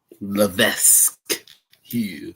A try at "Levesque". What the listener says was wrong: No, that whole shit is silent, man. It's just Levesque. No S